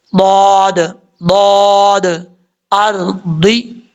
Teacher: اس کو اپنے مخرج سے ادا کرنا ہے. زبان کی لیفٹ سائڈ یا دونوں سائڈیں اوپر والی جو داڑھیں ہیں ان کے مسوڑوں سے لگانا ہے تو یہ ضاد پڑھا جائے گا. زبان اوپر کی طرف اٹھے گی اس کو پڑھتے ہوئے.